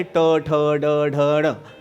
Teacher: मूर्धन्य काय आहे ट ठ ड ढ ण ते मूर्धन्य आहे